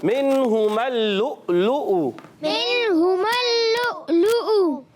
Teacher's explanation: حلق کے نیچے والے حصے سے حمزہ اور ہا ادا ہوتے ہیں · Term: حمزہ کا مخرج